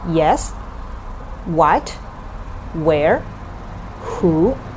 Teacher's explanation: the ending sound is higher and the beginning sound is a bit lower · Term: question tones